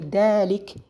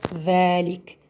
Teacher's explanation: she didn't put the tongue on the tip of the edges of the upper teeth, but she put it in the gum of the upper teeth